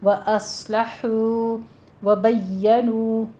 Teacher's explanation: واو مدہ ہے، دونوں ہونٹوں کو گول کیجئے